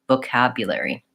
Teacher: make sure you're stretching on the ka, which is the A vowel, the vowel in man · I would say it definitely has an O sound, but the O is not stressed. The second syllable is stressed. So the O is reduced and short, vocabulary.